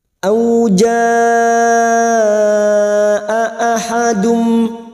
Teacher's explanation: bertemunya Mad dengan Hamzah dalam satu kalimat lima harakat kita panjangkan auja ahadum dua huruf hamzah jangan diseret dua huruf hamzah ini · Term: mad wajib muttasil